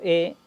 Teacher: la e es media porque la boca no se abre tanto ni se cierra tanto y la posición de la lengua es anterior digo eh y la lengua se va hacia adelante en el